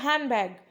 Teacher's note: मतलब वो डी पढ़ेंगे ही नहीं